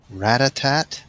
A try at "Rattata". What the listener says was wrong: Rattata. There's no T at the end. Why would it be Rattata? It's Rattata.